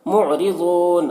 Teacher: یہاں پر میم ساکن کے بعد میم ہے، میم کو میم سے ملا کر غنہ کے ساتھ پڑھیں گے، اس کو ادغام شفوی کہتے ہیں۔ معرضون، را کو باریک پڑھیں گے، را کے نیچے زیر ہے۔ ضاد کو پر پڑھیں گے، ضاد حروف مستعلیہ میں سے ہے اور یہاں پر آیت ہے، وقف کریں گے تو یہاں پر مد عارض وقفی ہوگا۔